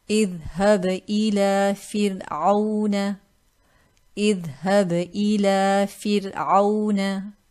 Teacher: The second case is if Ra is sakina and a kasra precedes it. So again in this case Ra is sakin, the letter now preceding it has a kasra, so we read this light. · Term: tarqeeq